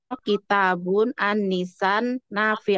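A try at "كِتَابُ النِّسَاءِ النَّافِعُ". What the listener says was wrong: jangan pakai tanwin kalau ada alif lam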